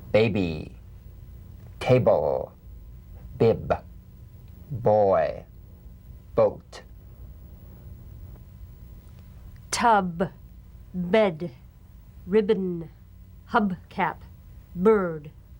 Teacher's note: the springing away from contact not by pressing the lips together you'll feel a gentle voiced pulsation on the lips like a delicate crisp cap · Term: drum beat staccato consonant